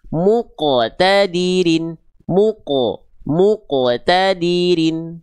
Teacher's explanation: Qalqalah itu artinya memantul. Maka pantulkanlah huruf qaf ketika sukun.